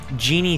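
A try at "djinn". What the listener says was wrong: Just for future reference, well, you don't pronounce the D.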